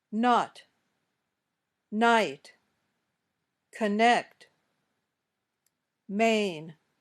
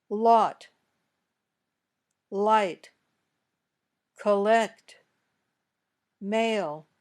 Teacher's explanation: the air comes up out of your nose when you say all the air comes out of your mouth